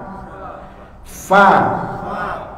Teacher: sebelum faanya terucap sudah ada udara yang keluar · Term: hams